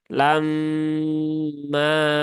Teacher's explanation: ini mim yang bertasdid maka tunaikan ghunahnya ditahan tiga harakat setelah itu tunaikan madnya ya Ini ada Alif ee setelah fathah